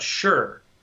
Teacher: we use an SH sound instead of an S sound. In fact, so it's I'm more sure that some people who struggle with spelling would actually put an H in there, because we do say it with an H, or with a sh, which is normally SH.